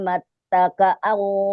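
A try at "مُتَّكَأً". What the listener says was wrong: Awas, bukan mat. Mut.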